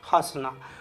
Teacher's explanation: हंसना जो है नाक और मुंह दोनों से बोला जाएगा, उसी को बोलते हैं अनुनासिक।